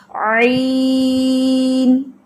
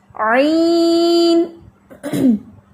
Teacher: عین پہ آپ نے ناک میں آواز نہیں لے کے جانی, کیونکہ یا آ گیا یا مدہ میں اکثر آواز ناک میں جاتی ہے, تو آپ نے زبان سے آواز کو نیچے رکھنا ہے.